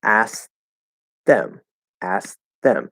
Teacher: so what actually happens is that t disappears and we might stop it to make it a little clearer